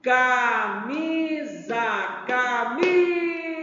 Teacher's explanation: a sílaba tônica está na sílaba mi a sílaba mi é a penúltima sílaba da palavra